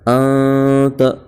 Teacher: نون پر جزم ہے اس لیے نون ساکن ہوگا، اور نون ساکن کے بعد حروف اخفا کے 15 حرفوں میں سے تا آیا ہے، اس لیے نون ساکن کی آواز کو ناک میں چھپا کر پڑھیں گے